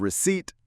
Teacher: Receipt has two syllables. We stress the second one. The P is silent.